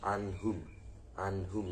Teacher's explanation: nun-nya bertemu dengan hak jadi dibaca dengan jelas atau terang tidak ada dengungnya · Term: izhar halqi